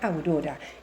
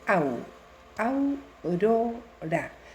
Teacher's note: Entonces vemos que la sílaba primera en donde identificamos el diptongo dice au, aurora, una sola emisión de voz, dos vocales que van seguidas en una palabra que forman una sola sílaba que no se separan